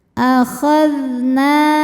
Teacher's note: Zal ini dari segi suara sifatnya rokhawah, jadi suaranya dialirkan.